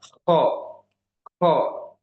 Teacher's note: Kemudian huruf kho ini dia setelah huruf ghoin, ya, makhrajnya sama-sama dari tenggorokan bagian atas dan dia lebih tipis dibandingkan ghoin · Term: Kho tipis